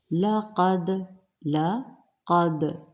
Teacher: دال پر جزم نمایاں پڑھا جائے گا، قلقلہ کیا جائے گا۔ لقد، قد، قاف میں بار بار کہہ رہی ہوں، قاف، غین، خا مستعلیہ حرف ہیں، ان کو پر پڑھیے گا۔